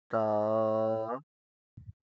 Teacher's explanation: اس کو سختی سے نہیں پڑھنا ہے اور اس کو موٹا کر کے نہیں پڑھنا ہے بلکہ نرمی کے ساتھ اور باریکی کے ساتھ۔